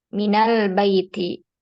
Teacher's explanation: Nun sukunnya dia diharakati fathah